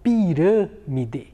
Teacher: A sílaba rã, ela é uma sílaba mais fechada.